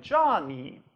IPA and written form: dʒɑ.ni: (Johnny)